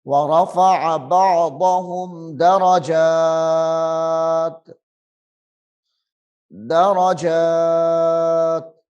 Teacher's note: جیم کو لمبا کرنا ہے ایک الف کے برابر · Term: مد اصلی